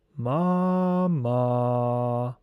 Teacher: On pronouncing the first syllable ma, this syllable will be vocalized in a very high and acute manner. On vocalizing the second syllable ma, it will be vocalized in a very low manner.